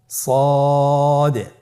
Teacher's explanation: জিহ্বার আগা, সামনের নিচের 2 দাঁতের পেট ও আগার সঙ্গে লাগিয়ে উচ্চারিত হয়।